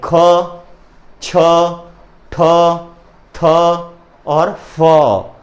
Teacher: इस प्रकार आखिरी में इनके ह का उच्चारण हो रहा है, इसलिए कहलाएंगे महाप्राण वर्ण